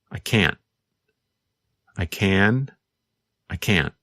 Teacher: in the negative form, because the tongue and voice stop, there is almost no sound of the letter N. Can't.